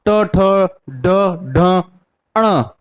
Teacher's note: ट वर्ग के व्यंजन को हम ट ठ ड ढ अण इसको हम कहां से बोलेंगे तीसरे नंबर पे मूर्धा से